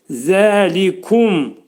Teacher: Zəlikum ağız yumulur, mim hərfini izhar edirik.